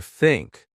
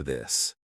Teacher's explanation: Put your tongue between your teeth. Push air out for think. Add voice for this.